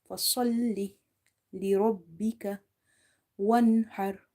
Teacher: Ha is from the middle of the throat, and this ra is also heavy.